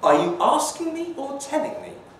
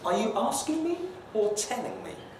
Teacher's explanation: notice with the high fall at the end it sounds a bit more agitated possibly irritated